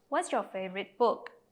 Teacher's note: question starts with the word what so it's a wh question so our voice falls at the end · cho nên khi hỏi, người nói sẽ xuống giọng ở cuối câu.